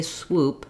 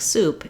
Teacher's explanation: if somebody's trying to say swoop and it comes out sounding more like soup it's because they have difficulty moving from the W to the oo